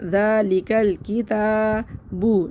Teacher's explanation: ذا کھینچنا ہے 1 الف برابر ، اس طرح جیسے میری انگلی کھل رہی ہے تھوڑی سی،